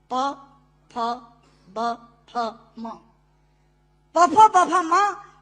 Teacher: दोनों होंठ मिलाकर बोले जा सकते हैं। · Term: ओष्ठांग